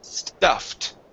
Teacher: first up we have an ed ending this is a t sound